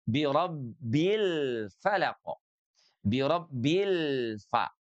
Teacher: lamnya harus keluar dari ujung lidah kita bersentuhan dengan langit-langit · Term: lamnya tawasut dan izhar